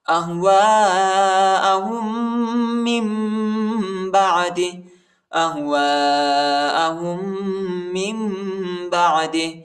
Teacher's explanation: نون ساکن کے بعد با آیا ہے، ادھر ہم اقلاب کریں گے، ٹھیک ہے، میم کی آواز نکالیں گے اور اخفا کریں گے